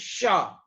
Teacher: तालू के पास जबान होती है और हवा निकल जाती है आराम से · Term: तालव्य श